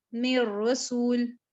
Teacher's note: نون کے اندر آپ را کی آواز کو مکمل طور پر ملا دیتے ہو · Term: کامل ادغام